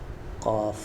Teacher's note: میں آپ کو زوم کر دیتا ہوں، یہ والا کاف آپ کو دکھ رہا ہوگا حروف لہویہ میں قاف. ٹھیک ہے، یہ زبان کی جڑ اور تالو کے نرم حصے سے ادا ہوتا ہے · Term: موٹا کاف